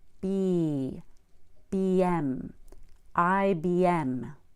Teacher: we need to put a y in between the B and the M because B ends in the long vowel e